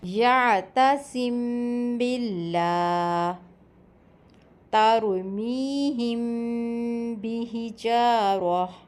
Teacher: اگر میم ساکن کے بعد حرف با آ جائے تو میم کی آواز کو ہونٹوں پر ہلکا سا چھپا کر اخفا کر کے غنّے کے ساتھ پڑھا جاتا ہے۔ اسے اخفائے شفوی کہتے ہیں۔